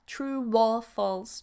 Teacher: True or false links with a wa. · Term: Linking wa